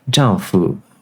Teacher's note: in mainland it's got the neutral tone on the second character so it'd be like jungfu or something like